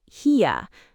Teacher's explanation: Here sounds almost like hier. The R just floats away. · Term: The floating R